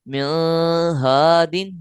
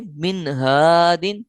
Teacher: اس کو اخفا یعنی غنہ کے ساتھ نہیں پڑھیں گے، مثلا من ہادن یہ نہیں پڑھیں گے، یہ غلط طریقہ ہے، پڑھیں گے من ہادن یعنی ظاہر کر کے پڑھیں گے۔